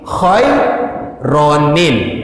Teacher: kita menambahkan nun baris bawah bunyinya ni. Maka ni inilah yang kita akan masukkan kepada lam yang duduk di selepas hamzah wasal. Maka ni masuk ke lam bunyinya nil.